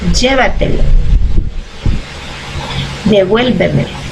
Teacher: palabras que llevan el acento prosódico en una sílaba anterior a la penúltima sílaba